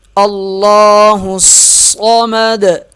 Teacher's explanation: حمزہ لام سے ملے گا اور لام موٹا پڑھا جائے گا